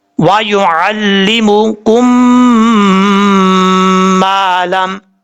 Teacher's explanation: ادغام مثلین, کیونکہ ایک جیسے میم آ رہے ہیں. کم, ایک الف کی مقدار غنہ کریں گے.